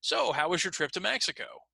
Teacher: so notice normal focus last word of the sentence